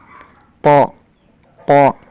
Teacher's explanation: sifat jadi harus ditebalkan itu naiknya lidah ke arah langit-langit mulut menempelnya lidah ke arah langit-langit mulut pengucapannya harus ditebalkan pok pok dan tidak mengeluarkan nafas tidak ada angin yang keluar